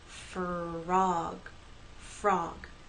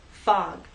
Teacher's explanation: in the word frog, we have F and R, F, They blend together and go into the next vowel sound